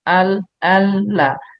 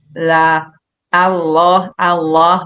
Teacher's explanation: Ini huruf lam yang nempel ke gusi atas